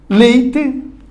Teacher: O E começa forte, o I diminui, porque o E é vogal e o I é semivogal. Por isso seria um ditongo, então, decrescente.